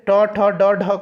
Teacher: मूर्धा से होता है, यानी कि मूर्धन्य से ट ठ ड ढ का।